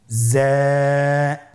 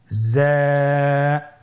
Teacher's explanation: উচ্চারণ করার সময় অবশ্যই এক আলিফ টেনে পড়তে হবে এক আলিফ টেনে পড়তে হবে হরফটি বারিক হরফ এজন্য পাতলা করে উচ্চারণ করতে হবে হরফটির মাখরাজ আপনারা দেখতে পাচ্ছেন জিহ্বার আগা সামনের নিচের দুই দাঁতের পেট ও আগার সঙ্গে লাগিয়ে উচ্চারিত হয়।